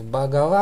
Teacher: А, ну и вот там, где стоит «га», его лучше произносить звонко, как украинское. То есть «багава» оно вообще читается.